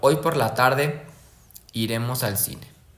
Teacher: El primer grupo termina en un tonema ascendente y el segundo en descendente. Ejemplo, hoy por la tarde iremos al cine. · Ejemplo, hoy por la tarde iremos al cine. Primero sube y luego baja, ascendente, descendente. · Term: dos grupos fónicos